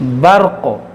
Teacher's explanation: دیں گے قاف کو بھی ساکن کر دیں گے برق اور را کو موٹا کریں گے قاف کو بھی موٹا کریں گے اور قاف جب ساکن ہوگا تو اس میں قلقلہ بھی ہوگا